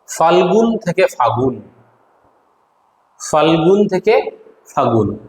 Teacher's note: আবার দেখো ফাল্গুন থেকে ফাগুন, এটা মাঝখান থেকে ল বাদ গিয়েছে, তাই এটার নাম হচ্ছে অন্তর্হতি।